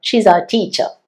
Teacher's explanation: കാരണം ആർ നമ്മൾ ബ്രിട്ടീഷ് ഇംഗ്ലീഷിൽ പ്രൊനൗൺസ് ചെയ്യുന്നില്ല അപ്പോ ആർ സൈലന്റ് ആയി ബാക്കിയുള്ളത് ഷീ ഈസ് ടീച്ചർ എന്ന് പറഞ്ഞു വിടുയാണ്